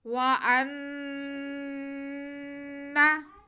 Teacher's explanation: हमज़ा का ज़बर हम नून के साथ मिलाएंगे और नून पे गुन्ना करेंगे। व अन्ना, खींचना बिल्कुल नहीं है।